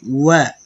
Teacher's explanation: প্রথমে ঠোঁট গোল হবে পরে ছাড়বেন